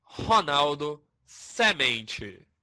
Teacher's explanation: na região Nordeste, temos o uso das vogais O e E abertas, como em Ronaldo, semente.